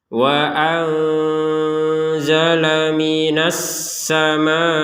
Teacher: karena bertemu dengan huruf Zai maka dibaca dengan samar